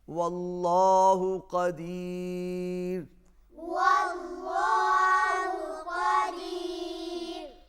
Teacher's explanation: اگر دال کے اوپر زبر ہوتا تو پھر یہاں پر را موٹا ہوتا، چونکہ یہاں پر دال کے نیچے زیر ہے، لہٰذا اس وجہ سے را جو ہے وہ باریک پڑا جائے گا